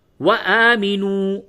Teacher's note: نون واو پیش نو واو مدہ ہے، اس کو تھوڑا کھینچ کر کے پڑھیں گے